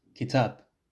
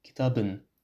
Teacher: with a back and unrounded a, becomes kitabın, of the book.